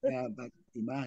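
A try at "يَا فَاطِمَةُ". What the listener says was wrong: Ya, fa panjang itu, fa-nya yang panjang. Ya, Fatimatu.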